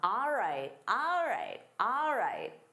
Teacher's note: instead of saying all right, native speakers commonly say ah.